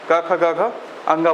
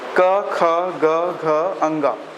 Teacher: क में आपके मुंह से जो वायु बाहर आ रहा है उसका मात्रा कम होगा एज कम्पेयर टू ख के